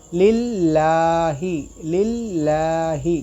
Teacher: اس اللہ کے اسم کے لام کو باریک پڑھنا ہے